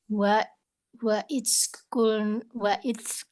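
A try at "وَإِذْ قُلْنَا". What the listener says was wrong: Ya, jangan diriza ya. Wa pokoknya biasakan gigi atas sama gigi bawah itu menjepit lidah. Wa keluarin udaranya. Wa ya, nanti latihannya kayak zazizubar ya itu ya.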